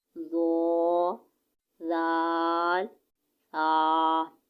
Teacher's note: اس کے بعد ہے حروف لسبیہ، یہ کہہ رہے ہیں زبان کا سرا اور اوپر کے دانتوں کے اندرونی کناروں سے ادا ہوتے ہیں